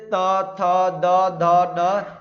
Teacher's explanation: दांत और जीभ के स्पर्श से बोले जाने वाले वर्ण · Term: दंत्य